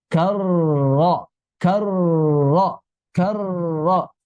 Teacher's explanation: si ujung lidah itu menyentuh sekali, kemudian bergetar di dekat langit-langit, bukan dijauhkan dari jauh-jauh dari langit.